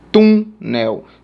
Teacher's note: Portanto, é uma paroxítona, tá? Penúltima sílaba. Ou a segunda sílaba de trás para frente. É a tônica.